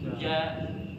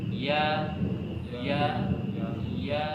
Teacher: untuk Jim itu tertutup sempurna ja ya tetapi huruf ya tidak tertutup sempurna